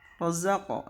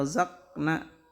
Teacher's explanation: Di sini ada huruf qaf mati, itu harus mantul, yang sering disebut dengan qalqalah ya. Jadi qaf di sini bacanya harus mantulnya ke o, tapi setengah harkat aja.